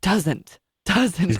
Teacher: there is no H in the word doesn't but he puts in h in the word doesn't he like doesn't doesn't it was like weird that breathy I